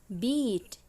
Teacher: Bunyi I pada kata beat adalah high front vowels. Ini berarti bahwa lidah kita naik dan terdorong ke depan sehingga berada di bawah hard palate.